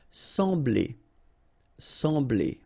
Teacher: So you don't pronounce the M, you just get the sound en.